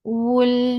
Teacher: makhraj of waw circling your lips. As you will touch lam, your lips should be in a straight position with tawassut.